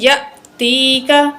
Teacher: حمزہ جو ہے ساکن ہے، جھٹکے سے پڑھیں گے